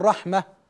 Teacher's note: تاء التانيث التي تبدل هاء عند الوقف